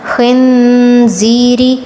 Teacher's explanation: خاء پر تفخیم نون پر غنہ